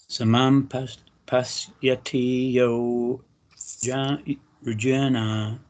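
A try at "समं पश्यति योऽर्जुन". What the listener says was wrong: So the way you do that is you join the yo with the Arjuna. So you go your Juna. Your Juna. Instead of going yo Arjuna.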